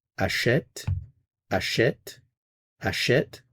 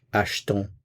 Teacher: where you do have the E accent grave, you do hear the vowel sound. If it's just the E, there is no sound. So achète, you hear it.